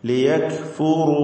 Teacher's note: റായിന് തഫ്ഹീം കൊടുക്കുക, തടിപ്പിച്ച് റായിനെ ഉച്ചരിക്കുക.